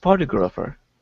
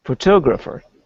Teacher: the stress is on the second syllable in this word